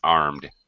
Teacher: The D, no extra syllable, no extra vowel sound.